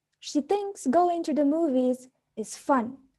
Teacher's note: state facts or information not statements which clarify or emphasize anything we use a fallen intonation at the end of the sentence